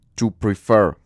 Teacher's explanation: la sílaba tónica, la sílaba fuerte está al final